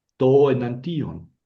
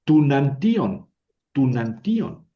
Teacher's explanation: Cuando la O, el sonido O, choca con el sonido E, se convierte en U. U. Hemos dicho que la Omicron con la U no forman diptongos, suena nada más U, suena una vocal que es la U. · Y cuando choca la Omicron con la epsilon, el sonido resultante es una contracción. El resultante es una U.